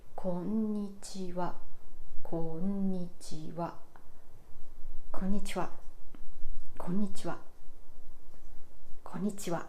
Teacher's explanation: There's n sound after ko, and the length of the sound n is the same as the other parts.